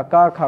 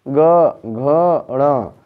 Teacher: का खा कोई कंपन नहीं। आ में क का आ कोई दिक्कत नहीं।